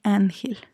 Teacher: ángel es grave porque la sílaba tónica es an, entonces gel sería la última, an sería la penúltima y termina en una consonante que no es ni N ni S, entonces es una palabra grave.